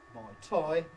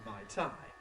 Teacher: the vowel shift that changes eɪ into ʌɪ, changes aɪ into ɒɪ, and changes ɔɪ into oɪ.